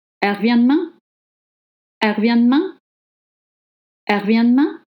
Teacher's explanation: In spoken French, le E is dropped.